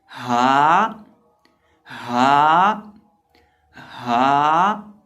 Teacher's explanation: इसकी आवाज़ निकलेगी हलक के आखिरी हिस्से से जो सीने के साथ मुत्तसिल है